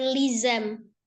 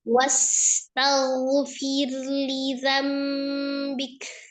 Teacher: dza ujung lidah ada di ujung gigi seri bagian atas